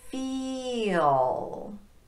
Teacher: our tongue is in the highest position in the mouth on that E sound, and we have to drop quite a bit to get to the dark L.